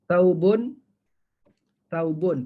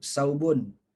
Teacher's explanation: Ini gigi kita, gigi atas, ini gigi bawah. Jadi lidah tu kena keluar sedikit. Kena gigit lidah.